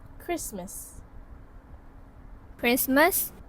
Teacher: And yes, there is also an elision observed in the word. The sound T is omitted from cluster. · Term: consonant cluster reduction